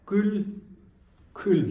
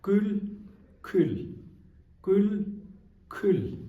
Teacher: The difference is kul kul. Second one is bit aspirated.